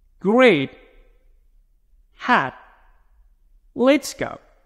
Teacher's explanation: State number three is called held T. You don't have to pronounce T completely with a buff of air.